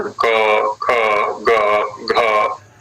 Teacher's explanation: जिह्वा मूल पर हो रहा है स्पर्श।